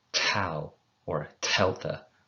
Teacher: Taking it kind of a step further, being very breathy with the consonants. Make the tau or the delta sound, but have a puff of air after it